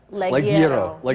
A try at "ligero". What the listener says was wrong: You didn't roll your R, but he did.